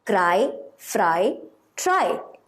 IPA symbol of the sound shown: ie